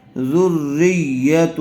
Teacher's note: را کے اوپر تشدید ہے، ذال کو را سے ملائیں گے، پھر یا کے اوپر تشدید ہے، را کو یا سے ملائیں گے